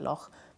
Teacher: it's a fricative, that means it's a rubbing sound that you do in your throat. And we have it a bit in words like loch, if you say a Scottish word like loch. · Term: the ch sound